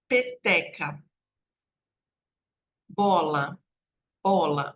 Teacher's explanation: eu uso os dois lábios para fazer o som de peteca bola bola então eu eu puxo né o Lábio para dentro para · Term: oclusiva bilabial